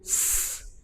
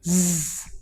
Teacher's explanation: Z, there is vibration. So this shows that S is a voiceless sound, but Z is a voiced sound.